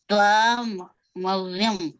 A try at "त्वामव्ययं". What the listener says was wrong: हाँ मैंने कैसे पढ़ा, अब बोला आपको, त्वा और म को साथ में पढ़िए। वव्यम नहीं है, त्वाम वव्यम नहीं है, व्ययम।